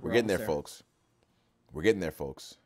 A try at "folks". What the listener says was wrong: Do you say folks? Why do you say the L? Oh, you said the same. You did the same with egg yolks. Folks.